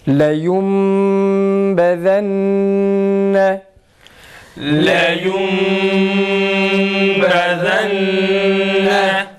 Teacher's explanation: Buradaki nunu mime çevirerek iklabla okuyoruz.